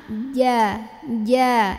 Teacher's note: Kalau jim justru enggak boleh ada berisiknya ya. Keluarnya dari tengah-tengah lidah, bertemu langit-langit tengah